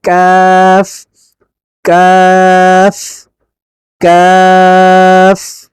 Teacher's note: জিহ্বার গোড়া থেকে একটু আগে বেড়ে তারপরে বরাবর তালুর সঙ্গে লাগিয়ে বলতে হয় কাফ